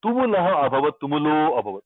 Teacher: So here visarga goes o.